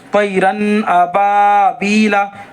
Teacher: اس کو زیادہ دیر اخفا نہیں کریں گے، غنہ نہیں کریں گے، لیکن ہلکا ظاہر کریں گے